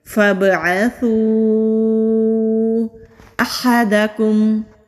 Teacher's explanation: हा हरूफ हल्की है, हल्की सी हवा के साथ हा हलक से अदा होता है।